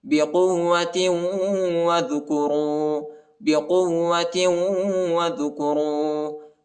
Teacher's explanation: قاف کو واو کے ساتھ ملائیں گے، واو کو شدت کے ساتھ پڑھنا ہے، اور تا کو دوسرے واو کے ساتھ ملانا ہے، ٹھیک ہے.